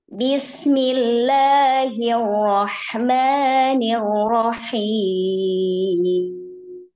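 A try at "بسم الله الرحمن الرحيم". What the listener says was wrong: Nah, itu apa namanya masih nanggung, Bu. Jadi turunnya di mani, coba ya. Di mani dulu ya. Bismillahirrahmanirrahim.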